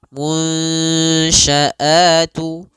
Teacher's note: Nah, caranya adalah kita samarkan nunnya kepada huruf shin